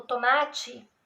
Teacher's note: falamos a última sílaba e damos a impressão do i, e na verdade a palavra ortograficamente se escreve com E.